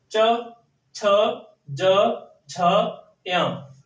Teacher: चा वर्ग के सारे वर्णों को बोलने के लिए जीभ है वो तालु में लगती है। चा वर्ग के सारे वर्ण बोलने के लिए जो जीभ है वो कहां लगती है, तालु में लगती है। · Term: तालव्य